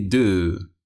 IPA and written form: du (do)